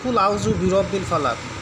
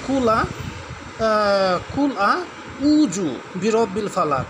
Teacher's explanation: আইন উচ্চারণ করতে হয় কণ্ঠনালীর মধ্য থেকে চাপ দিয়ে।